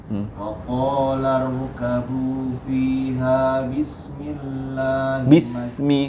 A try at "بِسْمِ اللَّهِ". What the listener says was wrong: Sinya kurang panjang. Bismillah.